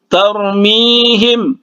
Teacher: mi 2 harkat karena ya mati atau ya sukun itu madlin